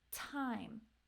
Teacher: T is a little bit different than an ending T so beginning T will have that puff of air